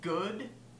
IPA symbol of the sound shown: g